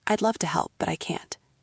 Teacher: It goes down, then up a little at the end. It sounds light. · You want a tone that is firm but warm. We call it the falling rising intonation.